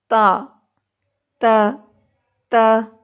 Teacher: زبان کی جو نوک ہے اور دانتوں کی جو جڑ ہے وہ آپس میں سختی سے ملتے ہیں